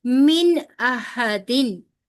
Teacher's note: पीछे अभी बताया मैंने आपको ना, आगे हमजा आ रहा है हरूफे हल्की में से, तो नून जी का यहाँ पे नून अगर साकिन है और उसके बाद अगर हरूफे हल्की में से कोई लफ्ज आ जाए तो फिर नून को उसकी तमाम सिफात के साथ पढ़ते हैं, यानी कि नून को पूरा पढ़ते हैं, फिर गुन्ना नहीं किया जाता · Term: नून का इजहार